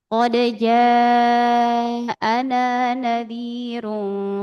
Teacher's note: Qalu bala qad jaana nadirun fakadzabna wa qbala qodalna nadirun faqadzabatna wa [bernyanyi] perhatikan di sini ja mad wajib ya mad wajib muttasil jadi 4 sampai 5 harakat atau semua sepat lebih dari dua ya lebih dari dua harakat.